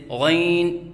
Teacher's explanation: ناک میں آواز لے کے جانا، جیسے غین، یہ غلط ہے